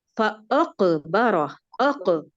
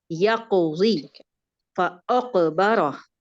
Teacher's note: قاف موٹا بھی ہے اور قلقلہ بھی ہے. یہاں کا قلقلہ اور پیچھے فاقبرہ، یہاں بھی قلقلہ آپ نے، قلقلہ کا درجہ بہت کم تھا، اس کو مکمل درجہ سے ادا کرتے ہیں.